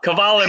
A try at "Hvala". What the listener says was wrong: So you know how is the easiest thing to remember? So Australians have koala bear, and here in Serbian and Croatian, just take out the K and put the H. So it's hvala.